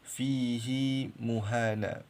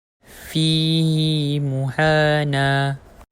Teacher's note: cara membacanya adalah bacaan panjang dengan dua harakat ha dome yang sebelumnya terdapat ya sakinah, iaitu kita panjangkan dua harakat fihi muhana. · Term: silah